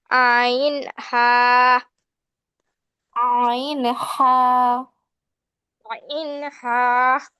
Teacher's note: 2 নম্বর মাখরাজ হলকের মধ্যখান হইতে